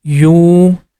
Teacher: This U sound we have to make it for 2 count because of letter Waow. Whenever you see letter Waw is coming after Dhamma, we have to stretch Dhamma sound for 2 count.